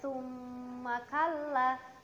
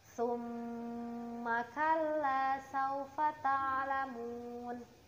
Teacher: harus ada dengung di bagian hidung dan dibaca Dua harokat agar bacaan ghunnah nya sempurna